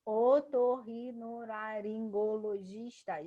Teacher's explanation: giz é a mais forte, então é a penúltima